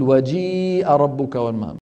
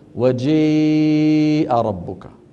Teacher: تقريب الفتحة إلى الكسرة والألف إلى الياء من غير قلب خالص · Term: الإمالة الكبرى